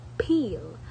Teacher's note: it is lateral because the air flows around the sides of the tongue. Therefore, it is peel, bilabial and alveolar lateral.